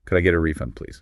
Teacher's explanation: Notice the rising intonation here because this is a question.